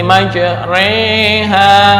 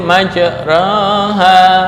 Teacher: Yang sugro adalah keadaan antara fathah dengan imalah kubro.